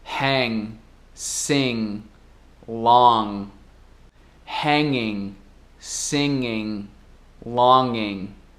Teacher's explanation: dentro da palavra, o G ainda fica mudo, mais ou menos